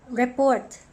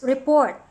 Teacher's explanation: report as a noun wherein the stress is on the first syllable and another one is report where the stress is on the second syllable